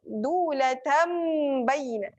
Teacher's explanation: Okey, kaila yakunu dulatam. Yang ni kena terus rapatkan bibir. Mim bertemu dengan ba, iklab. Mim tanwin berjumpa dengan ba, dulatam baina.